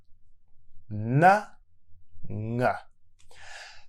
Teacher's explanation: Both n and ng are pronounced with air coming through the nose. If you hold your nose, you'll see you can't make the sound.